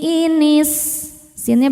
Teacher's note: Walsi inisinnya berdesis ya. Salah satu sifat dari sin yang tidak memiliki lawan yaitu shofir. Ada desisan.